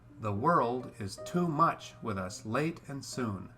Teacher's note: it's all messed up by the two accented syllables next to each other, too much